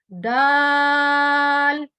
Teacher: जबान की नोक ऊपर के 2 दांतों के मसूड़ों से जब टकराती है तो वर्ड दाल अदा होता है